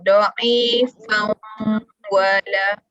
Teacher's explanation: Masuk bunyi tanwin ke dalam waw. Jadi ada bunyi waw. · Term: idgham bi hunnah